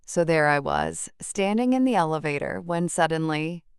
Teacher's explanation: The pause after suddenly creates suspense.